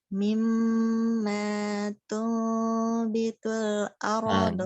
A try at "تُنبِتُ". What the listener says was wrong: Bitul. Bitu. Sempurna dong, jangan bitul. Bitul.